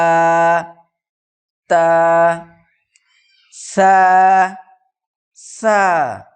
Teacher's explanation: জীভের আগা এবং সামনের উপরের দুই দাঁতের আগার সাথে লাগিয়ে উচ্চারিত হয় সা